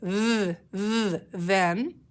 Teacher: the chunk I see at the beginning of my word th it makes the voiced sound